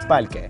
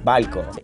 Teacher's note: I like how they changed the R for an L in most words. The R has gotta be in like the middle or the end of the word.